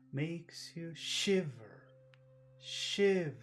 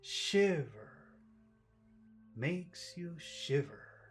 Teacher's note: Shi, that's the accented syllable. It's bigger than ver.